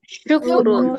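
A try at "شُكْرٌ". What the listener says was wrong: এখানে শুক এরকম হবে না, শুক্রুন।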